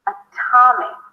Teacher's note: because the ta is the primary stress. Not only that it's not a flat T, it's actually a strong aspirated T with a little H after.